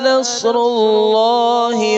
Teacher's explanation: جاء، اذا جاء، نصر اللہ، صاد ہے، صاد، نص، آگے را بھی موٹا ہے، لفظ جلا اللہ بھی موٹا پڑھنا ہے